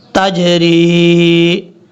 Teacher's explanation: را کو جب یا سے ملائیں گے تو یہاں لمبا کیا جائے گا اس کو